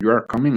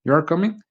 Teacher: a falling tone in you are coming indicates a statement, while a rising tone in you are coming indicates a question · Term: intonation